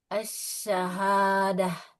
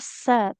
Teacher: Jadi huruf syin ini kita tekanannya di tengah lidah ke langit-langit atas ya.